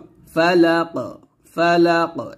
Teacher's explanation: এই কফটা কলকলা করতে হবে